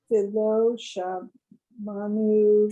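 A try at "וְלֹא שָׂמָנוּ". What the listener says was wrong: Sa. That one's a sin.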